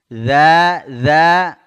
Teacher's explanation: Idza huruf dzal, ingat ya. Za ya, ujung lidah bersentuhan dengan ujung 2 gigi seri atas.